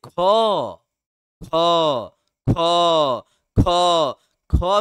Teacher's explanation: ख में अंतिम में क्या हो रहा है कि हो बोला जा रहा है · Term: महाप्राण